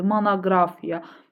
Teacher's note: Monoqrafiya sözündə hər iki O A-ya çevrilir.